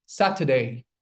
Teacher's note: You're dropping the R sound completely over here. By the way, it's Saturday, not Saturday.